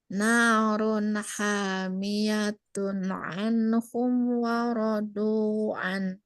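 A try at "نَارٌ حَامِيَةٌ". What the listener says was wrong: Oke, sip. Masya Allah.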